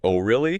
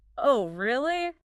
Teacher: The O goes up, the O goes down, and then back up at the end.